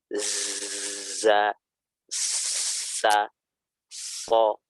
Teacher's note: Keluar dari ujung lidah, hampir bertemu dengan gigi seri bagian bawah. Gigi depan bagian bawah. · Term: sifat sofir